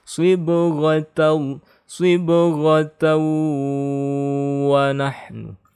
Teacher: Karena ini adalah idgham bi gunnah, fathatain bertemu waw, maka tasydidnya digunnahkan.